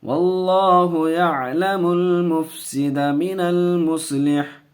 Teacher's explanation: اللہ کے لام سے پہلے زبر ہے، اللہ کے لام کو پر پڑھیں گے